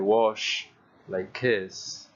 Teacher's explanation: right at the end there is no vibration